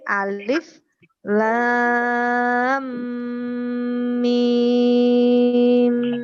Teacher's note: Jadi bacaan guna. Bacanya memang harus mendengung. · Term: idgham mimi